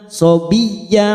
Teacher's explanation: masuk pada huruf ya yang bertasdid tanpa ditekan lama-lama shobiy ynya kita panjangkan dua harakat Mad iwad cabang dari mad